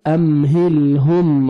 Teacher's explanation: ام میم ساکن کا اظہار ہے جلدی پڑھیں گے